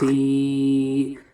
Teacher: یا مدہ کو ایک الف کے برابر کھینچ کر پڑھیں گے